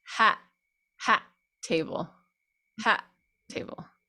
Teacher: when you have the end and the beginning of the next word the same consonant, and we tend to do a glottal on that